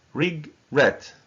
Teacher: And the stress is on the second syllable.